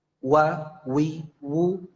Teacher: cara pengucapannya itu memang mecucu baik itu dalam keadaan fathah kasroh dhomah atau sukun itu mecucu